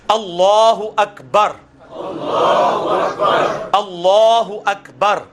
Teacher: لام کو پر پڑھنا ہے کیونکہ اللہ کا لام جو ہے وہ پر پڑھا جاتا ہے